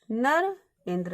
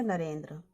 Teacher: आ के बाद ई आया है तो इन दोनों के स्थान पर क्या हो जाएगा ए हो जाएगा, बन जाएगा नरेंद्र।